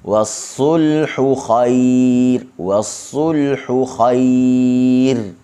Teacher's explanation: sulhu halqum tengah. Kha halqum atas.